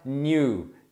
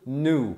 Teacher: Então você fala new, tem o sonzinho do i, mas a a ênfase tá no u. Mas normalmente no inglês americano você vai ouvir muito mais eles pronunciando nu